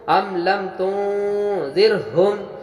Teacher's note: نون سائن میں زال آیا، اخفا ہوا، آواز کو ناک میں چھپا کر پڑھیں گے، اور را ساکن سے پہلے زیر ہونے کی بنا پہ را کو باریک پڑھیں گے، ام لم تنذرہم۔